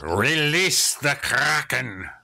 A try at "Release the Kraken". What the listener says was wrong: You have to roll your R's.